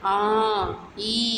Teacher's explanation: இரண்டாவது நெடில் ஆ ஈ அந்த உயிரெழுத்து ஏழும் இரண்டு மாத்திரைதான்